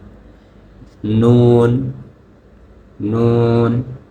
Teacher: 9 নম্বর মাখরাজ হচ্ছে জিহ্বার আগা তার বরাবর উপরের তালুর সঙ্গে লাগিয়ে